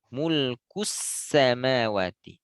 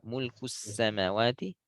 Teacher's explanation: Tambah aliran angin, aliran suara pada sin sukun.